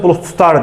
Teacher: Yəni d t-ya keçəcək avtomatik olaraq.